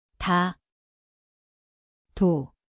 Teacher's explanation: Znie ako D lomeno T. Miesto je špička jazyka, uvoľnená.